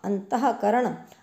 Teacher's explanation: विसर्ग का उच्चारण ह के समान होता है।